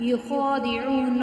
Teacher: خا جو ہے اس کو 1 الف اور 2 حرکات کے برابر کھینچیں گے۔